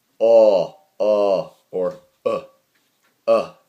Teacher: schwa here which uh can be articulated as oh or uh and this is the same sound in english up